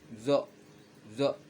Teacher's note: Zo hampir mirip zai, tapi dia lidah lebih tebal, lebih ke pangkal lagi, bukan makin ke ujung. Kalau zai itu dia di ujung lidahnya.